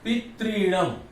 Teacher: ह्रस्वरी और ह्रस्वरी मिलकर के दीर्घ री बनेगी।